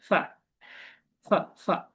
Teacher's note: এই ফ বলার সময় এটা একটু হচ্ছে উপরের দাঁত নিচের ঠোঁটে একটু লাগবে